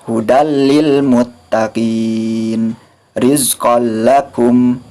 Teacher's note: Ini termasuk ke dalam idgham. Maka cara membacanya dimasukkan tanwinnya ke dalam lam, tapi tanpa disertai dengan gunah karena termasuk ke dalam idgham bila gunah.